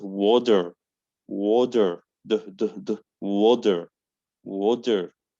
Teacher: So I pronounce T like D, and I pronounce R in American.